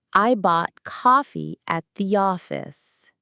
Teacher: For many Americans, there's no difference between the vowel in cot and caught. They both use that open ah sound. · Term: cot-caught merger